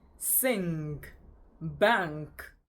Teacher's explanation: This sound is a velar nasal sound. It is articulated as as in sing, bank.